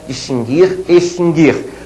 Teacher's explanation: a letra U não é pronunciada